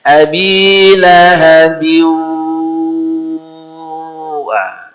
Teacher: Kasroh tain menghadapi wawu. Secara hukum namanya idgham bi gunnah. Maka biwa harus ada gunnah. Ya. Jadi tertahan dia.